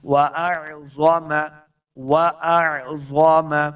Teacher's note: پہلا حمزہ دوسرا عین ہے، دونوں کے تلفظ کے اندر مخرج کے اندر فرق کرنا ہے